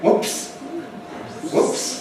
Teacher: an interesting thing about whoops or oops in English is that it must have a rise. Whoops. Going up.